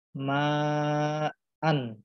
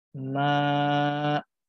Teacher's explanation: dia berubah bentuk bacaannya dari an menjadi a sepanjang dua harokat. Contohnya di sini dari ma'an menjadi ma.